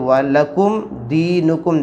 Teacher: ساکن کے بعد یہاں پر با اور میم نہیں ہے بلکہ یہاں پر دال ہے تو اظہار شفوی ہوگا، بلکہ ناک میں آواز نہیں لے جائیں گے، سادے انداز میں پڑھیں گے تو وَلَكُمْ دِينُكُمْ، دال یا زیر دی نون پیش نو، لکم